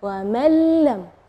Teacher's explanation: Ya, di situ kita bacanya wa man lam, ya, jadi huruf nunnya tidak ada, atau kita dibilang idgham ke huruf berikutnya dan gunnahnya tidak ada, wa man lam, ya. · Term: idgham bila gunnah